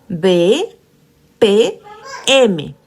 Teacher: al momento de pronunciar estos fonemas, los dos labios se van a juntar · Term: fonemas bilabiales